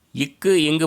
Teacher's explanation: நாவின் முதற் பகுதி, அன்னத்தின் அடிப்பகுதி